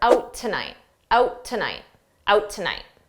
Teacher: The T is just silent. But tonight starts with a T, so I can use that T from tonight for both words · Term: combine out tonight together